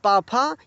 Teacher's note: प फ ये क्या है? अघोष ध्वनियां हैं।